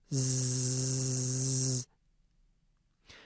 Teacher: It is the vibration of the vocal folds that creates the “buzzing” quality of the sound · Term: voicing